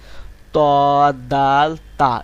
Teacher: জিহ্বার আগাটিকে সামনের যে দুই দাঁত আছে এই দাঁতের গোড়ার সঙ্গে লাগা দিবেন দিয়ে ত দাল তা এরকম ভাবে উচ্চারণ করবেন ত ত দাল